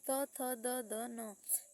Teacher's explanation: दंत से बोला जाता है त थ द ध न